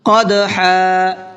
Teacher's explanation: قاف کو پر کر کے پڑھنا ہے اور دال کے اندر قلقلہ کرنا ہے